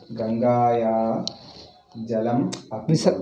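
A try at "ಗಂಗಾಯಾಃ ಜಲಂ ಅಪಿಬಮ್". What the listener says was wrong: ವಿಸರ್ಗ ಹೇಳು. ಮತ್ತೆ ಅದೇ ರಿಪೀಟ್ ಮಾಡ್ತಾ ಇದ್ದೀವಿ, ಸಂಧಿ ವಿಚ್ಛೇದನೆ ಆಗಲಿಲ್ಲ.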